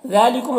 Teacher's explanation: वला तक़तुलुन नफ़्सल्लती हर्रमल्लाहु इल्ला बिल हक़। ज़ालिकुम ज़ाल में खड़ा ज़बर है, एक अलिफ को बराबर खींचेंगे। कुम के मीम में ज़ार शफ़वी होगा, इसे जल्द पढ़ना।